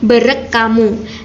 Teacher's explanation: Bila digabung, kedua kata tersebut akan menjadi bereng hamu. Namun, bunyi eng dan h ini dalam kata bereng hamu akan mengalami perubahan menjadi k, sehingga penggabungan katanya akan menjadi berek kamu. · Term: asimilasi fonemis